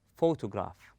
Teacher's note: we stress on the first syllable then we go easy · We stress on pho. We place a strength or force on the first syllable, and we go easy on the rest of the word.